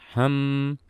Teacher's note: Mim sifatnya sama seperti lam, yaitu sama-sama bainiyah atau tawassut, dan suara mim saat kita lafalkan, saat kita menahan suaranya, itu akan mengalir suara gunnah.